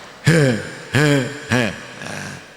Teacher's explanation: Ha ini harus dari tenggorokan paling bawah.